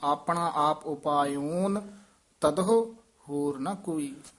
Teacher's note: ਉਪਾਇਓਨ ਨੰਨਾ ਹੈਗਾ, ਨਾਣਾ ਨਹੀਂ ਲਾਉਣਾ।